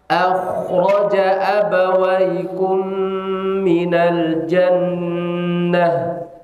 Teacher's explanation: Tebalkan, rokuahkan. Tebal itu isti'la, karena huruf kha huruf isti'la.